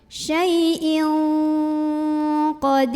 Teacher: Jadi ini dengung banget ya, samar disertai dengung, dengungnya kedengeran banget